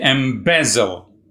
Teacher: Embezzle has 3 syllables, embezzle, and the second syllable, be, is stressed.